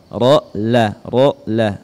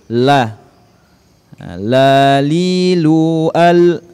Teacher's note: Huruf la ujung lidah disentuhkan di langit-langit, ya, lebih depan sedikit dari huruf ra.